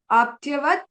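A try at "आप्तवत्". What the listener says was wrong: not aptya, it is apta, aptavat, aptavati,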